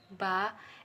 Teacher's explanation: voiced bilabial stop sound